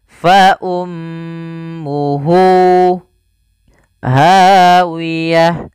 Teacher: Kemudian pada lafal hu di sini ada silah dhamir, maka di sini kita namakan dengan mad silah qasira, yaitu mad yang kita panjangkan 2 harokat disebabkan karena ada hak dhamir, yaitu huruf ha.